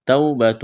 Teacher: واو ساکن سے پہلے زبر ہے، واو لین ہے، بغیر کھینچ کے پڑھنا ہے